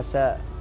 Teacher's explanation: مثل النطق في الثاء ينطقونها ساء